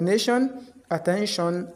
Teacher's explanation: But in some few cases T is gives SH sound. So T is pronounced as sh in I O N words.